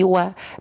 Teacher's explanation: Kan udah kita bahas di awal nih tadi. Ya, wawu fathah bunyinya bukan wo tapi wa.